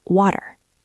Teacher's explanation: >> When a T is between two vowel sounds, it gets soft. It stops being a sharp T and starts sounding almost like a quick soft D. We call this the flap T.